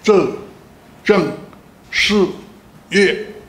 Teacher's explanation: 都是去声，那个声音就一直在下坠下去下去